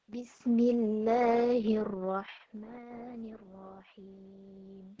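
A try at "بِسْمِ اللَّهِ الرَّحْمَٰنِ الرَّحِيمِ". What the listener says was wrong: Ma-nya masih terlalu panjang, lalu alirkan lagi. Bismillahirrahmanirrahim. Itunya juga dialirkan. Ha sama sinnya. Karena dia sifatnya rokhwah, maka jangan bismillah tapi bismillah dialirkan. Supaya untuk membedakan dengan huruf-huruf yang sifatnya itu dia tidak mengalir suaranya. Contohnya hamzah.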